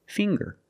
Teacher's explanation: we see the nasal um sound plus the hard G